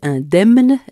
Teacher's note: on prononce le M dans indemne, mais pas dans damnation